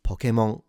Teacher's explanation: So the pitch accent is a low to high. And notice that the n at the end is fully nasalized.